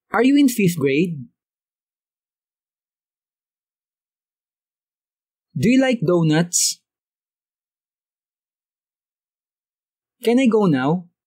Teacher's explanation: mapapansin ninyo na pataas ang pagbigkas ng pangungusap sa huli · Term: rising intonation